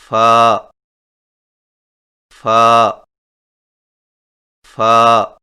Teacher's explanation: فا کی ادائیگی میں سامنے والے اوپر کے دو دانتوں کے سروں کو نچلے ہونٹ کے گیلے حصہ پر لگا کر باریک آواز میں پڑھیں، یعنی فا فا فا۔